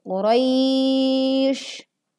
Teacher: Panjangkan dulu saat kita membaca ya sukun Qurai 2, 4, sampai 6 harokat. Baru kemudian kita menutup dengan shin dibaca waqaf dengan kondisi sukun.